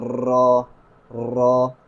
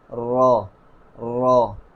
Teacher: یعنی را کو ادا کرتے وقت زبان کی نوک میں ہلکی سی کپکپاہٹ پیدا ہوتی ہے۔ اس میں ہم زیادہ تکرار نہیں کریں گے، اصل تکرار سے بچیں گے، یعنی ہم ایسے نہیں پڑھ سکتے را را، بلکہ زبان کی نوک میں صرف کپکپاہٹ آئے گی، را را۔